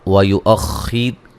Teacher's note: ویؤخر خا کو موٹا ادا کریں گے، را کو باریک پڑھیں گے، را ساکن سے پہلے زیر ہے۔